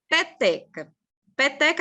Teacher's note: Para ela ser paroxítona, a sílaba tônica dela vai ser a penúltima.